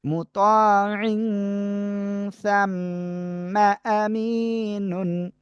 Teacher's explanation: নাকের ভিতরে নিয়ে গুণনা হবে, অনুস্বারের মতো গুণনা, উচ্চারণ হবে।